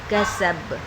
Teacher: با پر جب ہم با ساکن کریں گے تو یہاں پر قلقلہ کبریٰ ہو رہا ہے